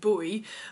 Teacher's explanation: the very rounded vowels that they have in Essex